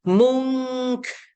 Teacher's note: Sebelahnya bila nun mati jumpa kaf. Kaf dia dekat pangkal lidah atas sikit. Jadi MUN jumpa kaf tambah K. Dengung dua harakat.